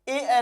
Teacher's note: ए और ऐ बोला जाता है किससे? कंठ से भी बोला जाता है और तालु से भी बोला जाता है। यानी कंठ से तो बोला ही जाएगा और तालु से। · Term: कंठ तालव्य